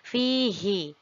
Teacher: Tetapi pengecualian pada surat Al-Furqan ini ayat 69, hi-nya kita baca panjang, hi-nya kita baca 2 harokat. Jika kita melihat pada tulisannya, pada salah satu mushaf ada yang menambahkan tanda seperti huruf ya itu yang menunjukkan panjang, ada juga yang tidak. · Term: mad mubalaghah